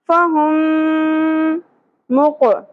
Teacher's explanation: क़ाफ पुर होगा और साकिन होने की वजह से क़लक़ला भी होगा